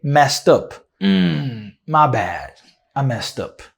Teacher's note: don't say messed with a D sound, and this E in messed is not going to be pronounced, the second E. So you want to say mess and a T sound, messed. And then you connect the T with the and up, and you say messed up.